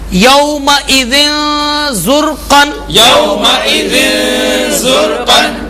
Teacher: حضرت یہاں پر تنوین کے بعد حرف زا ہے جو کہ حروف اخفا میں سے ہے، اس لیے یہاں پر اخفا ہوگا، یعنی کہ نون کی آواز کو چھپا کر پڑھیں گے، سبحان اللہ، غنہ کریں گے